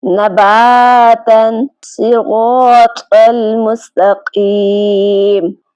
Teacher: یہاں دیکھیں الف سے پہلے جو حرف ہے اس کا مخرج ادا کر کے الف سے ملا کر اسے ایک الف کے برابر لمبا کر کے پڑھیں۔ جیسے نباتن کے اندر با میں جو آخر میں آ کی آواز آ رہی ہے یہ منہ کے خالی حصے سے نکل رہی ہے، اور اسی طرح صراط المستقیم میں غا میں جو آخر میں آ کی آواز آ رہی ہے یہ بھی منہ کے اندر کی خالی جگہ سے نکل رہی ہے۔ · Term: الف مدہ